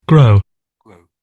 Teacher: There's no real W sound when you say grow.